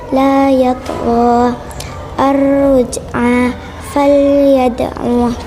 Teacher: dibaca dengan pantulan tidak terlalu kuat atau ringan karena huruf tersebut berada di tengah lafaz dan segera disambung bacaan setelahnya. Cara membaca dengan memanturkan suara huruf qol-qolah tersebut secara lembut. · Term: Qol-qolah surah